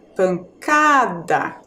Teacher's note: A penúltima sílaba é a mais forte